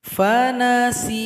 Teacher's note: Cara berhenti di sini huruf ya disukunkan, sin dipanjangkan 2 ketukan karena sudah jadi mad asli atau mad tabi'i.